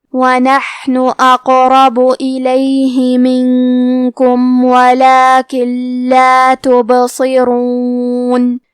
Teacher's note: یہاں حکم ہے قلقلہ تو ہمیں با کو ہلاتے ہوئے یہ کلمہ کو پڑھنا ہے تبصرون. حرف الصاد حروف التفخیم میں سے ہے تو ہم صاد کو بھاری آواز میں پڑھیں گے